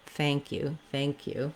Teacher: Just adding in when we say thank you, we have the main stress on the thank part. And then we also have a little bit of stress secondary on the you part.